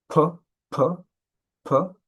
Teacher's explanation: It is produced um with the lips. So it is bilabial that means with both lips p and in manner it is called a pllosive or stop. · And in manner, it is called a plosive or stop. This is where there's a stoppage of airflow in the vocal tract, and this is followed by a release of air.